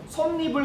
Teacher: 솜니불 같은 경우도 밑에 미음 받침이 있는데 니은이 첨가가 되죠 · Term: 니은 첨가